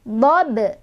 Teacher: Kita bertemu dengan qalqalah sughra karena ada ba yang sudah sukun dari asalnya ya. Cara bacanya dipantulkan dan pantulannya kecil aja, ngalir, karena kita langsung mengucapkan ke huruf berikutnya yaitu ha.